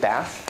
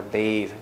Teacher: For example, mother, the ER in mother, bath, you take bath, which is this one, and you add an E, bathe, and the vowel also becomes longer